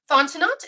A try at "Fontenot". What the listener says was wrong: It's Fontenot. The T at the end is silent. It's French.